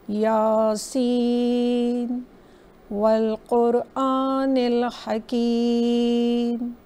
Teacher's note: और हकीम यानी कसरा और या की वजह से हमने उसको इलोंगेट किया। सीन के ऊपर मद्दे लाजिम है तो इसको हमने 5 to 6 टाइम्स पढ़ा